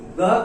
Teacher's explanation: ग का उच्चारण स्थान जो है कंठ होता है